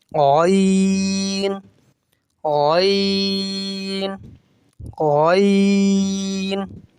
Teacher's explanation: غین کو بھی 5 الف کی مقدار کھینچ کے پڑھیں گے اور موٹا پڑھیں گے, حروف مستعلیہ میں سے ہے.